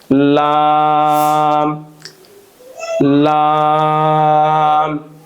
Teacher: জিহ্বার আগার কিনারা সামনের উপরের দাঁতের মাড়ির সঙ্গে লাগিয়ে